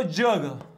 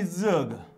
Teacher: चिन्ह मात्र एकच असणारे पर्याय कोणते बघा तालव्य आणि दंत तालव्य चझ यांचा उच्चार तालव्य पण होतो आणि दंत तालव्य सुद्धा होतो